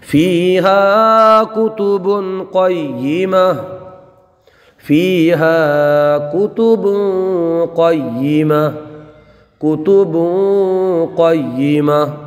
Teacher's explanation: با پر دیکھیے 2 پیش کی تنوین ہے، ہم نے جیسے عرض کیا تھا تنوین کے 4 قاعدے ہیں، تو انہی 4 قاعدوں میں سے یہاں پر اخفا ہوگا، اس لیے کہ تنوین کے بعد حروف اخفا کے 15 حروف میں سے قاف آیا ہے، تو یہاں غنہ کر کے پڑھیں گے